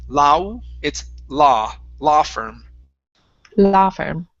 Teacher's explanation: Okay, so here instead of lao firm, it's la. So it's only an ah sound instead of an u.